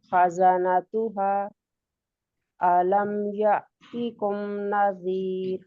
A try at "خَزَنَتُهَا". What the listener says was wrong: خزانتها پہ مد پوری کیجئے. 4 کاؤنٹس، 4 انگلیوں کو یوں کر کے کھولتی جائیں بند کر کے، اور جتنی دیر میں 4 انگلیاں پوری کھلیں گی اتنی دیر تک مد کرنی ہے آپ نے. خزانتها.